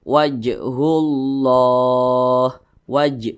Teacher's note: kepada huruf Qalqalah jadi apabila dia sukun itu dipantulkan nah dan huruf Jim ini dia termasuk kepada Qalqalah sugro atau Qalqalah kecil karena dia berada di tengah kalimat